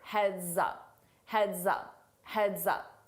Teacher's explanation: when I combine it with my vowel sound in up, I use a Z to combine that together and it sounds like one word